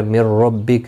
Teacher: نون ساکن کے بعد یرملون کا را آیا ہے، ادغام مع گنہ نہیں